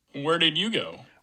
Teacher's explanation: it's going to end on a final f0 fall rather than the final f0 rise